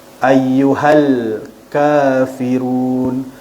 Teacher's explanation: Okey, ka ma asli huruf kaf berbaris di atas bertemu dengan huruf alif kecil. Ada alif kecil dekat atas huruf kaf tu, dibaca dengan kadar 2 harakat.